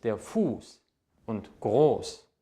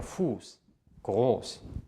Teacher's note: der Vokal, der vor diesem Buchstaben steht, wird lang ausgesprochen. Ein scharfes S, ein SZ, steht nie nach einem kurz ausgesprochenen Vokal.